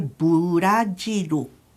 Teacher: mas em japonês vai ficar o burajiru 4 sílabas e geralmente nesses casos que acontece com palavras originalmente estrangeiras costuma-se complementar a sílaba com u